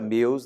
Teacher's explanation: E a palavra meus na mesma linha, porque apesar de 4 letras, o E vogal, o U semivogal, e nós temos o famoso ditongo decrescente.